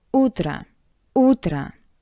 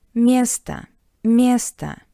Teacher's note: o sounds like a because it's unstressed. In the first word, U is stressed, O is unstressed, that's why O sounds like a soft A.